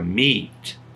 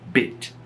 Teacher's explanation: eu falei ela mais longa, meet, e essa daqui ela é mais curta, mais seca, bit. Ou seja, algumas palavras no inglês, a vogal ela é mais longa, outras a vogal é mais curta.